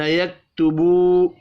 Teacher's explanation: واو مدہ ہے، واو مدہ کو بھی ایک الف کے برابر کھینچ کر پڑھنا ہے